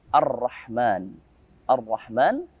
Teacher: Memasukkan huruf ra langsung tanpa membaca alif lam. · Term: idgham syamsiyah